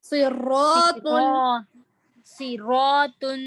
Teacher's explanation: صراط میں صاد موٹا ہے، را موٹا ہے، طا موٹا ہے